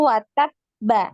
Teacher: Bertasydid, maka kita naikkan dulu suara baru kemudian dipantul hurufnya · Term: huruf qalqalah